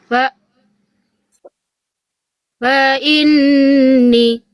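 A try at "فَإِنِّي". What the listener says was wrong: Ya, ni-nya 2 harokat ya, ada kasroh ketemu ya. Fa inni.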